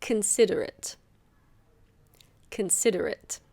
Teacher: It's not considerate. The O is a schwa, so it's considerate.